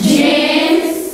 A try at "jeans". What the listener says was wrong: No G. Jeans.